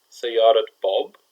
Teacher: the idaafa is where our temarbuta goes from being an ah sound to a t sound